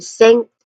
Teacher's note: sink which has a nasal sound in the middle the ng sound